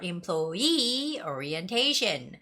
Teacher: seeing that word and we always see this word employee right the stress goes on where the two E's are